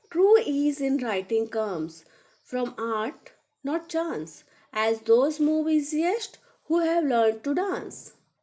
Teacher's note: That means both lines are end stopped. There is a pause at the end of each line marked by a comma or some type of punctuation.